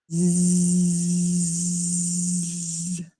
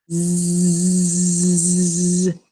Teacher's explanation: So our snake, which is our tongue, stays behind our gate, which is our teeth. And instead of just blowing air through our front teeth, we have to turn our voice on. So it makes a buzzing sound. So smile, teeth together, tongue back, and we turn our voice on. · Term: Z sound